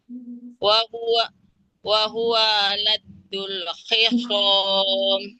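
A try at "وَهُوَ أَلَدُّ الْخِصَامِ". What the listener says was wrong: Oke, hamzahnya bunyinya harus jelas Ibu. Wahuwa a, wahuwa aladul khisom.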